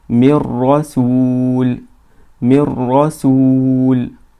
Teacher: we merged the letter noon into the letter ra or the letter lam, and we don't release any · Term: merging without nasalization